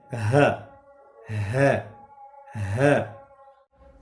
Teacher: ہ گلے کے اس حصے سے ادا ہوتا ہے جو کہ سینے کے ساتھ ملا ہو، سینے کے ساتھ گلے کا ملا ہوا حصہ۔